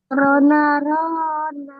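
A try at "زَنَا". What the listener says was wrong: Kok jadi ro? Zai. Zana.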